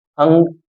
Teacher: जैसे आ, जैसे अंग का अगर प्रयोग करें तो अंग बोलते समय आ का उच्चारण हमारे मुंह से हो रहा है, मतलब उसकी जब अंग हम बोल रहे हैं तो हवा हमारे मुंह से भी निकल रही है और साथ में नाक के लिए नाक से भी हवा निकल रही है, इसलिए इसको अनुनासिक कहा जाता है।